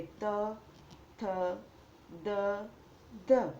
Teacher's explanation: જે વ્યંજનના ઉચ્ચારણ વખતે જીભ તાળવા અને દાંત બંનેને અડે તેને દંત્ય વ્યંજન કહે છે. જેમ કે ત, થ, દ, ધ.